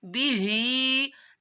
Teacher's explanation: हा के नीचे खड़ा मादा है तो उसको भी एक अलिफ के बराबर खींचना है।